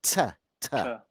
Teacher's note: a longer t, almost towards an S